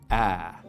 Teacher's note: We make it with the tongue cupped down low and towards the front of the mouth like this, ah. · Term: trap vowel